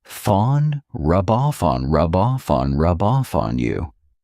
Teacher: So I'm saying those 3 words as one rub off on. So here I'm taking the F from off and I'm adding it on.